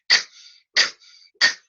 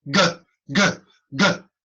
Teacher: a g is a voiced K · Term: voiced consonants